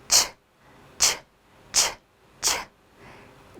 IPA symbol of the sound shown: tʃ